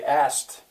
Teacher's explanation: Now in my dialect, many people would say asked. They would not bother to try to get that K in there.